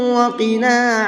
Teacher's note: قاف کو منہ بھر کے پڑھیں گے اور نون کو تھوڑا سا کھینچ کر کے پڑھیں گے، 1 الف کے برابر بس۔